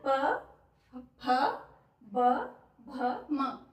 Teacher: जब हम इसको बोलेंगे इस वर्ग को बोलेंगे हम तो हमारे होठ एक दूसरे को स्पर्श करेंगे। · ये जो पांच व्यंजन है इनको जो है बोलते समय उच्चारण करते समय हमारे जो होठ हैं उनका प्रयोग हो रहा है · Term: प वर्ग